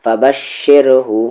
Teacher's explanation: را یہاں پر لائٹ ہے کیونکہ اس کی ساؤنڈ نیچے ہے